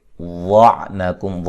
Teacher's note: واد کو موٹا ادا کریں گے، میم ساکن کا اظہار ہے